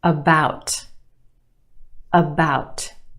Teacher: we have two syllables in that word. The second syllable is emphasized or stressed. The sound is stretched about.